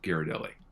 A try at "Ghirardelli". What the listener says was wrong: It's pronounced Ghirardelli, right? Like the second R is silent.